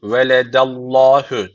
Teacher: Veledellahü derken Allah lafzı burada kalın okunacak. Önce isim harfi üstten bağlanıyorsa Allah lafzı kalın okunur.